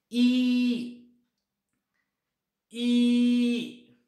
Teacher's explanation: So here my lips do not round. माझ्या ओठांचा आकार गोलाकार होत नाही. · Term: अनराऊंडेड व्हॉवल